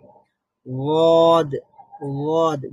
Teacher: উচ্চারণের সময় জিহ্বার কিনারার শুরু থেকে শেষ পর্যন্ত আওয়াজ লম্বা হয়। ওয়াদ, ওয়াদ জিহ্বার কিনারা মানে হলো যে গোড়ার যে 2 পার্শ্ব আছে। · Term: ইস্তিতালাত